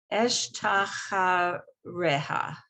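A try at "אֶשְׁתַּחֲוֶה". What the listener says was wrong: It's not a resh, it's vet.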